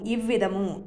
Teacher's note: ఈ అనేది హ్రస్వం అయిపోయింది, చిన్న ఈ అయిపోయింది, దీర్ఘం పోయింది.